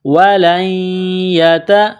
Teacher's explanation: یا کے اوپر تشدید ہے، یا کو دبانا ہے، سختی کرنی ہے